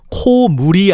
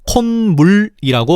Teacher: 의문론적 조건을 보면 앞 어은 코는 모음 5오로 끝났고 뒤 어은 물은 초성이 미음이네. 그래서 사이소리 즉 니은을 첨가시켜서 코물이 아니라 콧물이라고 발음하는 거지